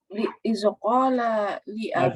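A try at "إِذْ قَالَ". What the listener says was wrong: Jangan iza.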